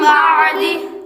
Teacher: نون ساکن کے بعد با آ رہا ہے تو اس لیے نون کو میم سے بدل دیں گے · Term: اقلاب